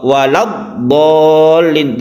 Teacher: Wala, lanya itu menjadi pendek sehingga langsung ke tasydid dot. · apabila ada mat tabi'i bertemu dengan hamzah wasol yang kita teruskan di sini, maka matnya itu menjadi hilang, artinya tidak panjang.